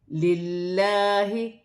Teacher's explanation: لام مشدد ہے تو لام باریک پڑھی جائے گی کیونکہ پہلے لام زیر کی حرکت آ رہی ہے اور کھڑی زبر بھی ہے، ایک الف کی مقدار کھینچ کر پڑھا جائے گا۔